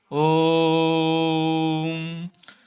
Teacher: ओ को 3 गुना समय में बोला जाता है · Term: प्लुत स्वर